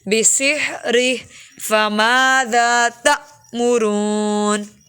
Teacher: حمزہ ساکن اس لیے اس کو جھٹکا دے کے پڑھیں گے